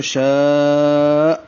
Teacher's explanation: حمزہ ساکن ہو جائے گا، اور حمزہ ساکن جھٹکے سے پڑھا جائے گا